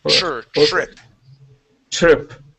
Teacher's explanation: And we pronounce that T like a CH sound.